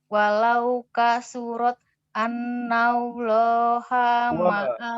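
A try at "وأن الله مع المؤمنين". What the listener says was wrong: Wawunya dibaca Kak. Wa annallaha gitu. Wawunya dilepas tadi.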